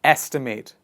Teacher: the focus of the pronunciation goes on the first part of the word estimate please repeat after me estimate estimate is the critical idea